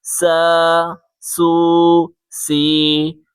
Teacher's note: سیٹی کی آواز نکال کے پڑھیں